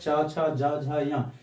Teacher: च छ ज झ य इस सभी का उच्चारण जो है ये तालो की मदद से होता है